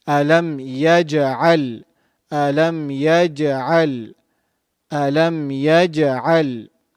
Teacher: the letter Lam, pronounced using the front sides of the tongue. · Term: Ain